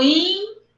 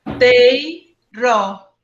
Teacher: Esse I foi pronunciado com a mesma intensidade do E? Não. Foi mais fraquinho, não foi? Decrescente. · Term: ditongo